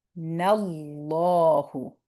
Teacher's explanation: So the na, the fatha joining into Allah's name. And when fatha joins into Allah's name is heavy